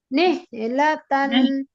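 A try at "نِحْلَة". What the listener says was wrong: হা কিন্তু আসতেছে না আপু। হা নেহ নেহ এই হাটাকে কি বলা হয় বলেন তো আপু? হায়ে হাওয়াজ নাকি হায়ে হত্তি? হ্যাঁ, হায়ে হত্তি কিভাবে পড়তে হয় আমরা বলছিলাম? হাঁসের মতো একটা ফ্যাসফেসে আওয়াজ হয়, তাই না? হাঁস ডাকার মতো। নেহ নেহ নেহ নেহ লাতান নেহ লাতান।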